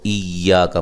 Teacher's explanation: حمزہ کو یا سے زور سے ملانا ہے، یا مشدد ہے. ایا کا، کاف کو باریک پڑھنا ہے.